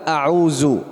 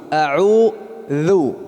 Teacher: Kalau ujung lidah tidak keluar berarti makhrajnya salah. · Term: dzal